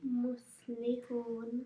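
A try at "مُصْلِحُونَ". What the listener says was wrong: Okay, two mistakes there. One's a swad. Swad is a full mouth letter, so don't make it sound like a sin. Listen to how I say it. Muslihun. And the ha. Hun. Okay, that's still a small ha, so we need to work on that.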